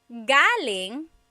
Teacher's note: the emphasis is on the first syllable. That means coming from.